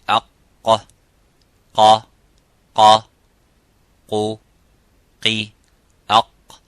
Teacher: And in the first makhraj the ulama mentioned, and Imam al-Jazari in his muqaddimah, is al-qaf. And the letter qaf, it has an echoing sound. It is harf mufakham, it is a little bit strong. So when we pronounce the qaf, we try to pronounce it audibly and as it is, qa, by opening slightly the lips vertically and making that sound and echoing by saying qa.